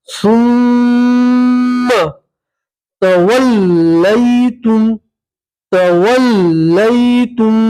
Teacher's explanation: मीम के ऊपर तशदीद है, मीम में गुन्ना करेंगे और झटके से पढ़ेंगे, सुम्मा तवल्लैतुम, तवल्लैतुम, यहाँ मीम सेकंड का इदगाम है, ठीक है।